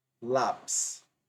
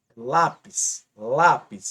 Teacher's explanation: A sílaba mais forte é a penúltima. Esse lá. Lápis. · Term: paroxítona